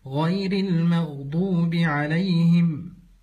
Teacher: القلقله في الغين الساكنه المغضوب او قلب الغين الى خاء المخضوب والصحيح ان تكون بالغين من غير قلقله